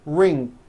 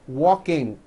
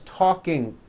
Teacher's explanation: becomes talking like that that is not right the problem is there's just this little K sound at the end of the ing sound